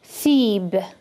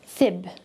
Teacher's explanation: this is very long feeb versus fib